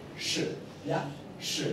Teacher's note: La I no se pronuncia, se pierde un poco